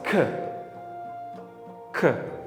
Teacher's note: 2 ta K degani K ni cho'zib aytasiz.